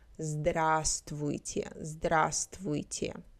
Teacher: We don't pronounce the V in the middle.